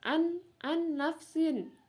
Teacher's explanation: Ya, ada nun sukun bertemu dengan huruf nun. Jadi huruf nun sukunnya dimasukkan ke dalam huruf nun.